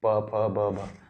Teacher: आपके होंठ जो है दूसरे होंठ को टच करते हैं, प फ ब भ, तो ये है ओष्ठ्य।